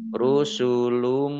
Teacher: Rusulum, mim ditandai dengan mim tasdid. Mim tasdid dibaca gunnah atau mendengung ditahan 2 harokat.